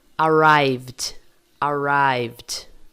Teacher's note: A gente tem que entrar na azul. Então, o ED vai ter som apenas de D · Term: som de D